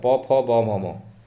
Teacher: दोनों ओष्ठ जो है चिपक जाएगा